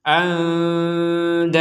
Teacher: Andada, maka yang awalnya dan menjadi da. Danya ini artinya panjang dua harokat karena kita berhenti.